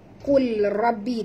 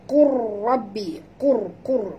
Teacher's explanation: Kita kena baca qur rabbi, qur qur, masukkan qaf terus ke dalam ra, kita idghamkan lam ni. Lam ni tak berbunyi ya